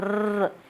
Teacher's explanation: र, आप बोल के देखिए, र ऐसे नहीं होता। रै को जब बोलते हैं तो कंपन सा होता है, वाइब्रेशन सी होती है, कंपन होता है। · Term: प्रकंपित